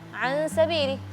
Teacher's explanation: Sin kan tipis. Jadi baca qunahnya tipis.